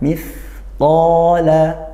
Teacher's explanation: desis makhrajnya dari ujung lidah bertemu gigi seri atas. Qala fathah diikuti alif, dibaca panjang satu alif atau dua harokat, yaitu mad tabi'i hukumnya.